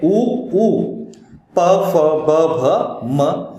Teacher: दो ओठ जब स्पर्श करते तब ओष्ठ्य वर्ण होते हैं, उसमें दो स्वर है उ उ, प फ ब भ म ये व्यंजन आते हैं।